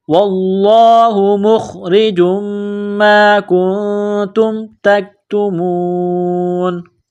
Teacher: stop کریں گے، وقف کریں گے تو نون کو سائلنٹ کریں گے